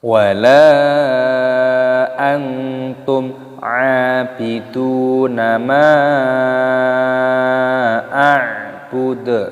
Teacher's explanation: lam alifnya dibaca panjang, mad jaiz munfasil dipanjangkan 5 ketukan.